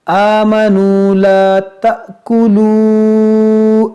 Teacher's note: یہ مد منفصل ہے کیونکہ یہ واو مدہ کے بعد حمزہ دوسرے کلمے میں ہے